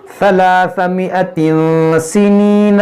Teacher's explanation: तनवीन के बाद सीन है इख्फा करेंगे